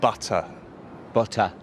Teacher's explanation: É comum também o T ter um som mais forte, mas em alguns sotaques de Londres, o som do T fica um pouquinho diferente. Ele é um som gutural.